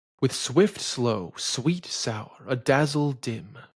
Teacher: Slow and sour are in unstressed positions, but are heavy words. In the case of slow, it should probably just take a secondary stress since it's in between swift and sweet.